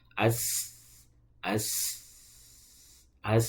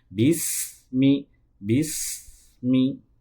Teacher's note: sin keluarnya itu dari ujung lidah bertemu dengan ujung gigi seri bawah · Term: huruf sin